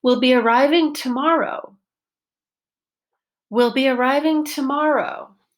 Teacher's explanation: my voice went up and then down to pitch one up and then down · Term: pitch change